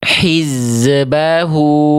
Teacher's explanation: tidak tepat ya karena zainnya memantul